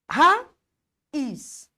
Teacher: É quando entre uma letra e outra eu causo o eu provoco um espaço, porém não é geográfico, é um espaço sonoro. Então quando eu digo raiz, eu provoquei um espaço entre o A e o I. · quando eu digo raiz, eu provoquei um espaço entre o A e o I. Eu tenho um hiato, independente da letrinha, seu fonema I, seu fonema U.